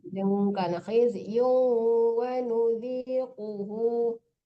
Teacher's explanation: Itu dengung ya, tanwin ketemu waw.